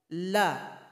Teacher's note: Di mana keluarnya? Yaitu dari ujung lidah, tempelkan ke langit-langit. Jadi sifatnya juga ada inhiraf, harus dipalingkan. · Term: lam